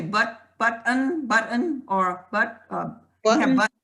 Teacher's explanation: It's a glottal stop, like we have in, some people say button, or Button?